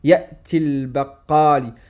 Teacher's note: Les voyelles longues waw, ya, alif ne se prolongent plus lorsqu'elles sont suivies d'une liaison.